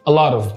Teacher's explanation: عايز كده حرف التي ده تخطفه وانت بتتكلم انجليزي